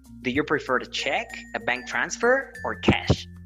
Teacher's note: So the falling intonation is always going to happen in the very last option.